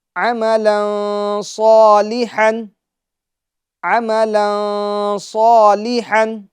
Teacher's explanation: صاد یہ حروف مستعلیہ میں سے ہیں تو اس کو پور یعنی موٹا پڑھیں گے